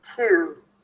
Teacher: then I close it with a round oo sound